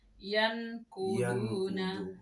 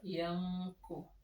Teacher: apabila nun sukun bertemu dengan qaf, kita harus baca dengung dengan cara membunyikan eng. Samar-samar ya, berarti samar ya. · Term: ikhfa